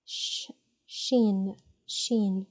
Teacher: We don't use our vocal cords to produce it. And but instead of the tip of the tongue, the midsection of the tongue widens a bit to produce this sound